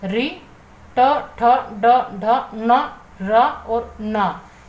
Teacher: रि, ट, ठ, ड, ढ, न, र और न यह जो आपके वर्ण है यह आपके मूर्धा यानी कि मूर्धा से उच्चरित होते हैं। मूर्धा से उच्चरित होने के कारण आपके मूर्धन्य कहलाते हैं।